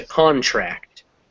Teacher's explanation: So what's happening there is that the first word, when it's a noun, like most English words, will take the stress on the first syllable. So con, and then that a kind of gets smaller, so it comes contract.